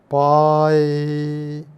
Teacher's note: നോക്കൂ പായ് അങ്ങനെ പായ് എന്ന് പറയുന്ന സമയത്ത് വായു അകത്തേക്ക് വലിച്ചു നോക്കിയാൽ തണുത്ത അന്തരീക്ഷ വായു നമ്മുടെ നാവിൻറെ മുകളിലൂടെ പോവുകയാണ് ചെയ്യുന്നത് വശങ്ങളിലൂടെ അല്ല പോണത്